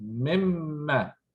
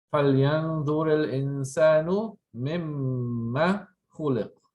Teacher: So you join the min and the ma, you get mimma, short vowel.